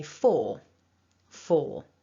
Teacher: this word doesn't have a strong r sound at the end for me when i speak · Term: strong form